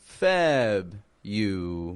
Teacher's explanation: the syllable stress strong in the beginning